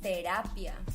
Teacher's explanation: la sílaba tónica está en el medio de la palabra por ejemplo cuando hacemos una terapia entramos a conocernos a nosotros